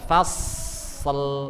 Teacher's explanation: Yang membedakan adalah isti'la. Sifatnya itu tebal, pangkal lidah atau lidah belakang itu terangkat. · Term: huruf shad